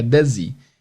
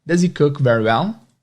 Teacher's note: às vezes, até na pronúncia, esse does he, o H é omitido, fica does he.